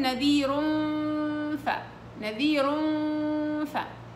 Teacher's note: ومخرجها الثنايا العليا مع بطن الشفة السفلية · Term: الفاء